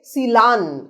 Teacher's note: দুটো দন্তন্য ছিল, প্রথম দন্তন্য ল ধ্বনিতে পরিণত হলো। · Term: বিষমী ভবন